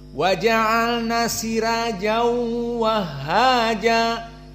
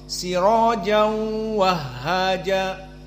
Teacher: jumhur bahkan Warsh sendiri membaca idgham bi gunnah